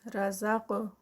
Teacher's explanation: رزق قاف کا قلقلہ، قاف ہیوی بھی ہے، 2 کاؤنٹس کا اسٹریچ